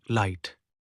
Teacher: The air escapes along the sides of the tongue while the tip blocks the middle. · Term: Lateral approximant